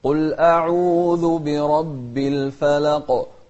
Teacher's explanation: نوضح القاف لأن الإنسان إذا قال الفلق فما راح يبين هذا الحرف إلا بالقلقلة